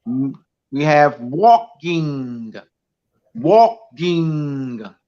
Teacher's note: you use your nasal cavities to produce the NG and also your throat